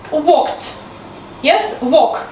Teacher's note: You hear the last sound is k, which is supposed to be the deaf consonant